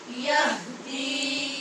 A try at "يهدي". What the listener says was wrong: اس کو یہدی نہیں پڑھنا، ٹھیک ہے؟ یہ غلطی عام طور پہ ہوتی ہے کہ جب بھی آگے حرف مدہ آتا ہے، واو مدہ ہو یا مدہ یا الف ہو، تو اس کو چھوٹا کر دیتے ہیں.